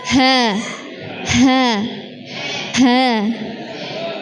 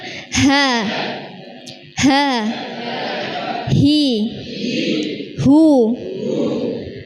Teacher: huruf ha, ringan dari tenggorokan bawah, bukan dari dada